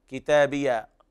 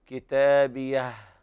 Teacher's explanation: الوقف على الهاء بالهمس